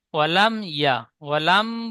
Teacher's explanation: ওয়ালাম বলে গুন্না হবে না। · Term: ইজহার সাফাবি